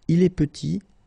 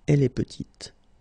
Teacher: Final T is not pronounced, and then when you add this E at the end, you get the sound T